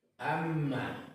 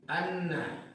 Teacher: setiap huruf yang bertasdid itu dibaca ganda, kecuali mim dan nun itu wajib didengungkan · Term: wajibul gunnah